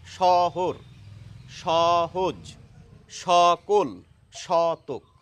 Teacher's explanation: আসলে বাংলায় দন্ত স লিখলেও আমরা উচ্চারণ করি তালব্য স এর মতো।